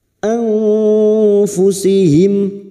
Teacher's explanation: mim sukun bertemu hamzah idhar syafawi mim sukun dibaca jelas tanpa mendengung